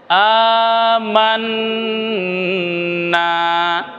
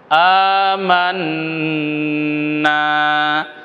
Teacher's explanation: একটু লম্বা হবে প্রিয় দর্শক তাহলে কেমন হচ্ছে আমান এই যে নুনে আমরা একটু ধরলাম নাকের ভিতরে আওয়াজ নিয়ে গেলাম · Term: গুন্না